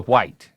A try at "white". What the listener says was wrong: Because you pronounce the H, which is literally silent.